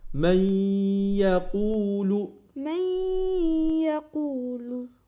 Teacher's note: إدغام نون ساكن بالياء مع الغنة